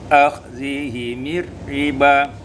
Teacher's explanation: kasrahkan mim kalau dibaca wasal menjadi akhzihimir riba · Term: kasril mim waslan